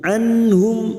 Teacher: nun sukun bertemu ha Idhar halq dibaca jelas tanpa mendengung